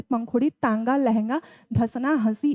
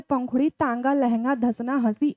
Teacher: जब हम बोलते हैं तो जो हवा होती है वो मुंह से भी निकलती है और नाक से भी निकलती है। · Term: अनुनासिक